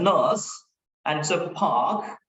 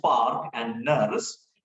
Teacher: when R should not be pronounced, most Indians pronounce R like park, nurse, etc.